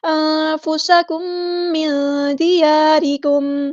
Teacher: نون ساکن کی آواز کو ہم نے چھپا دینا، اخفا ہوگا